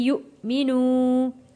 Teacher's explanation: حمزہ کے اوپر جب جزم آتا ہے اسے ہم نے جھٹکا دے کر پڑھنا ہوتا ہے